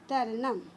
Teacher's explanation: और जिस शब्द में अनुस्वर होता है, जैसे यहाँ देखिए अहम, ह के ऊपर अनुस्वर है, इसका उच्चारण म जैसा होगा